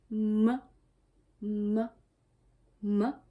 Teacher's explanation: Il est aussi assez simple. Vous fermez les lèvres et comme en B. Mais vous prononcez par le nez.